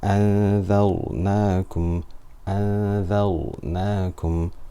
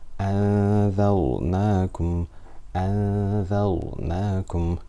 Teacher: we have a noon sakina here followed by a dhal. Dhal is light, it's not a full mouth letter.